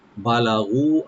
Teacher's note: বা ওপেন রাখবেন, লাম ওপেন রাখবেন, টানবেন না। গু এখানে একালিফ টানবেন।